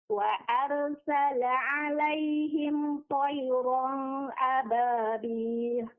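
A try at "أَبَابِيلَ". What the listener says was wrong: Ababil. Panjangkan 4 harokat, mad arid li sukunnya.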